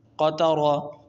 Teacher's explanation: اب را کے اوپر زبر آ گیا ہے، اس را کو موٹا پڑھیں گے